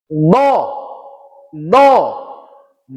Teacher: tepi lidah kanan menempel di geraham kanan